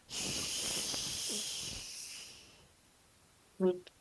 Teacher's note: your teeth now you're going to put it there again but instead of activating your voice box you just breathe out the sound